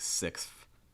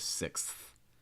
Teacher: people pronounce it almost like with an F sound, like sixth instead of sixth.